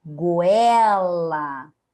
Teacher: o o vai ser a semivogal e o e vai ser a nossa vogal